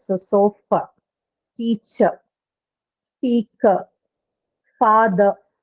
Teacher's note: So it ends at the vowel sound and that is the schwa sound · The r sound is not actually articulated in English for most of these words.